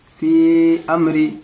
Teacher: यहाँ पे आप देखेंगे या मद्दा है, या मद्दा के बाद हमज़ा दूसरे कलीमे में आ रहा है यानी अमरीना में आ रहा है तो इसको भी 3 अलिफ के बराबर खींचकर पढ़ेंगे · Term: मद्दे मुनफसिल